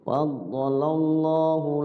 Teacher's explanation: Faddalallahu lafzul Allah dibaca tafkhim